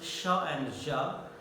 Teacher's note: Sha is of course voiceless, ja is voiced.